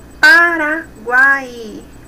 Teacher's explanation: Aqui nós temos um tritongo. Primeiro uma semivogal, depois uma vogal e por último uma semivogal novamente.